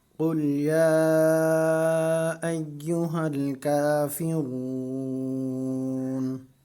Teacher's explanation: را کو ایک الف کی مقدار کھینچ کر پڑھیں گے کیونکہ یہ مدہ ہے